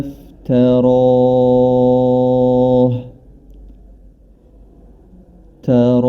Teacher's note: huruf ta dia memiliki sifat istifal atau lidahnya tidak lengket dengan langit-langit. Nah, kemudian huruf ro dia berharokat fathah.